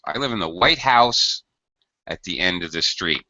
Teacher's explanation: So here, white is lower and house is higher in pitch.